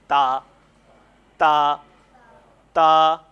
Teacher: جب زبان کی نوک ثنایا علیا اوپر والے دو دانتوں کی جڑ سے لگتی ہے تو تا اور تو ادا ہوتے ہیں